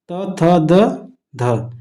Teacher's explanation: यह दंत होता है क्योंकि जीभ जाके दांत पे लगती है